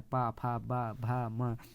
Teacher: जब हम ये वर्ण बोलते हैं तो ओठ आपस में चिपकते हैं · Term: ओष्ठ